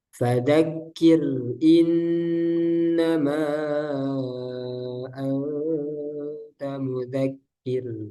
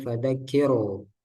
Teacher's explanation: yang tipis yang kedua yaitu ro sukun sebelumnya kasrah